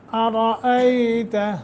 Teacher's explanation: را کے اوپر فتح ہے، زبر ہے، اس لیے را کو تفخیم کے ساتھ پڑھیں گے، یعنی منہ بھر کر موٹا کر کے پڑھیں گے۔ ایتا حمزہ ہے، یا ساکن ما قبل فتح حرف لین بنتا ہے، نرمی کے ساتھ 1 سیکنڈ کی یا 1 الف کے برابر مد ہوگی۔